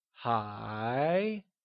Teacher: it is said with a mid rising tone like hi